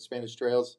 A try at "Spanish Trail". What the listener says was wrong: No, trail. No S on the end.